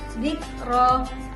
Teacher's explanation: Dikro, sama kayak yang sebelum-sebelumnya, tetap sama. Ro-nya dibaca tebal karena ro berharokat fathah.